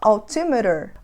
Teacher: existem alguns casos onde a gente vai fazer esse sonzinho do T como se ele fosse um R